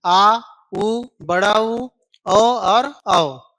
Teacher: पश्च मतलब पीछे ही होता है। ठीक है, तो ऐसे स्वर जिसके उच्चारण के लिए जीभ के पीछे वाले हिस्से का प्रयोग करते हैं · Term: पश्च स्वर